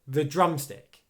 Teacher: is going to be more stressed okay so here the drumstick drum is much louder than the and produces more force